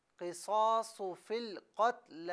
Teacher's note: قصاص میں صاد کو پر کر کے پڑھیں اور قتل میں قاف کو پر پڑھیں